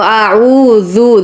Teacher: عو کو تھوڑا کھینچ کر پڑھنا ہے کیونکہ واو مدہ ہے آگے. تو اعوذ ذال پر زبان لگائیں گے, بربن کہتے ہوئے آگے بڑھیں گے.